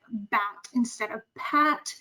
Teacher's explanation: you may hear a substitution like bat instead of Pat where the B is that voiced consonant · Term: voicing errors